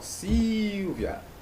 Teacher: eu tenho aí a sílaba tônica na penúltima sílaba. Então, eu tenho uma paroxítona.